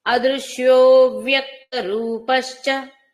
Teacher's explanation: దీర్ఘం లేదండి ఇక్కడ రూపశ్య అన్నప్పుడు హస్వంగా ఆపాలి